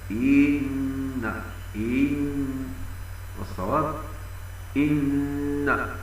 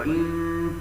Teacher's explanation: وينطقون الهمزه من كلمه ان بياء مديه